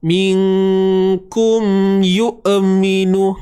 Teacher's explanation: Huruf hamzah bersifat syiddah, suara yang tertahan. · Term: Hamzah yang sukun